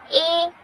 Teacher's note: जो हमारी जीवा है वो तालु को टच कर रही है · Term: कंठ तालव्य